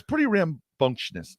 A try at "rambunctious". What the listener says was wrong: There's no N. There's no N.